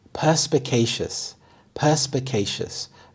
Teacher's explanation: The primary stress is on the first syllable, perspicacious.